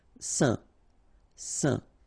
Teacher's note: final T not pronounced, and then when you combine this A-I-N here, you get the un sound